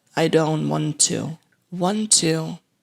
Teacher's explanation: they share the same consonants so only one to sound is pronounced and it's a true T sound